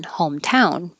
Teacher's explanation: most compound words have stress on the first syllable, like laptop, cell phone, backpack. But this one has stress on the second one, hometown. We don't say hometown.